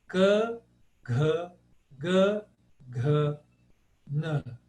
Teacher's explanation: Todos eles estão aqui na garganta. Todos esses primeiras consoantes estão todas na garganta.